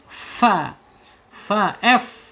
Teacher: ujung gigi seri atas menyentuh perut bibir bagian bawah. Fa fa f ya f ya bukan bukan p tapi f bacanya.